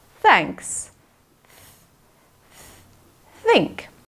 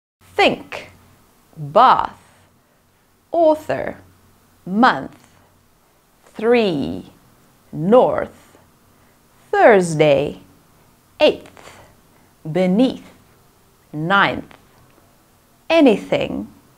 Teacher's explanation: sound is unvoiced you can create it with air only the tongue's tip passes through the teeth to make thanks think let's practice merely with air no voice